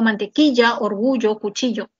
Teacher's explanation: Ese es el yeísmo. O sea, reemplazas la lateral palatal por la fricativa palatal.